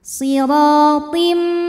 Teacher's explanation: Kemudian ada idgham bil gunnah karena ada tanwin kasrah menghadapi huruf mim, maka tanwin dileburkan ke mim. Siratim disertai bunyi dengung.